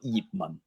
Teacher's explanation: 2 6 tones low level, Yip Man. Yip is the lowest tone. It's a 6th tone, the same tone as Jeet from Jeet Kune Do.